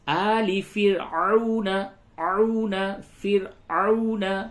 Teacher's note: را کو باریک پڑھیں گے، را ساکن سے قبل زیر ہے